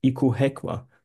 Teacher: Here K is a voiceless plosive